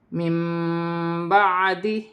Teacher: نون ساکن کی آواز کو میم سے بدل کر غنے کے ساتھ ادا کیا جائے گا